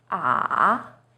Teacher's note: Third tone, 三 声, is even lower. It first dips down, then rises.